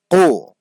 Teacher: জিহবার গোড়া তার বরাবর উপরে তার সঙ্গে লাগিয়ে একটু ভিতর থেকে উচ্চারণ